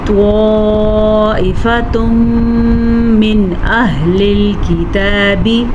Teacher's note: تنوین کے بعد یمون میں سے میم ہے تو ہم ان دونوں کو آپس میں ملائیں گے اور غنّے کے ساتھ ملائیں گے، اسے کہتے ہیں ادغام بالغنّہ